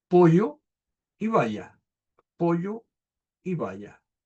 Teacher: Aquí tenemos el yismo, que consiste en pronunciar como y, la y la doble l